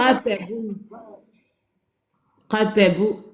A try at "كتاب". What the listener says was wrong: La première lettre, c'est quoi? C'est pas qaf. Tu confonds qaf et kef. Qaf, c'est ce qu'on a dans le crayon. Qa, qa, qa. Kef, kasra.